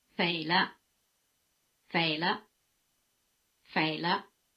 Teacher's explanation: the pitch of the neutral tone is near the top